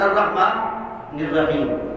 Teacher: عالمین جب پڑھ لیا تو اب وقف نہیں کر رہا تو الرحمن نون کو ملانا ہے را کے ساتھ